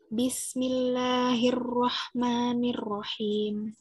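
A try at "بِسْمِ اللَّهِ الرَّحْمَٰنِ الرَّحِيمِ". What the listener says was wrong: R-nya kebanyakan getarnya, jangan hir. Kebanyakan hir, wahna.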